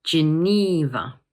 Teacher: This word has three syllables, and the middle one is stressed. Geneva. Notice that the middle syllable is a long E sound.